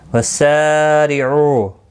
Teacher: وسارعوا، سا الف مدہ ہے، ایک الف کی مقدار کے برابر کھینچ کر پڑھیں گے۔ سین صفیریہ ہے اور زیر کی وجہ سے باریک پڑھا جائے گا۔ او مد منفصل ہے، 3 الف کی مقدار کے برابر کھینچ کر پڑھیں گے۔